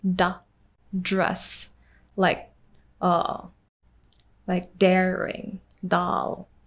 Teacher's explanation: for D, you need to touch the tip of your tongue to your palate